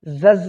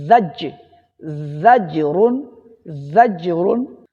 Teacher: آگے زجرن، یہاں پر زا اور جیم ایک ساتھ آنے کی وجہ سے ان کی ادائیگی مشکل ہو جاتی ہے، تو اس کے لیے آپ کو مخرج پہ غور کرنا ہے۔ زا کا مخرج کیا ہے؟ زبان کی نوک اور دونوں دانتوں کے درمیان سے ادا ہوتا ہے، اور جیم زبان کا درمیان اور تالو کے درمیان سے۔ تو زا کو پڑھنے کے بعد فوراً جیم کے مخرج پہ آپ کو آنا پڑے گا، زج، زز نہیں بلکہ زج، زجرن، زجرن۔